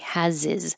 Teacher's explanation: This pronoun his with an h can disappear. And then we can connect the previous consonant to the I is. So it will sound like has.